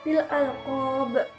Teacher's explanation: Di sini juga terdapat qalqalah kubro di bagian bil alqob. Di sini qalqalah kubronya yaitu ba di akhir kalimat dipantulkan dengan kuat.